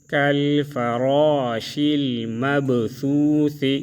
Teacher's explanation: را کو موٹا پڑھیں گے با میں قلقلہ کریں گے